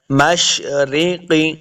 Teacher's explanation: قاف حروف مستعلیہ سے، 2 نقطوں والا قاف، تو اس کو ہم نے موٹا پڑھنا ہے۔ رب المشرق، رب المشرق والمغرب، لام ساکن ہے، لام کو جنبش نہیں دینی، قلقلہ نہیں کرنا۔